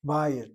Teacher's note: the accent is on the patah. Short vowel patah, not closed by dagesh chazak in the yud, nor a vowel underneath the yud, as a chirik the yud does.